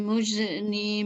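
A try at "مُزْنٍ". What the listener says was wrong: Ya, untuk pada saat sukun tidak perlu dipantulkan. Minal muz ditahan, muzni jangan sampai bunyi muzni. Ya, minal muzni.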